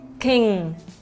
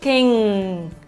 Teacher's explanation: king cũng đẩy lên âm mũi luôn, king. Hoặc là từ song, song. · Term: âm ng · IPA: ŋ